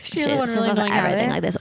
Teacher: She has a lot of vocal fry.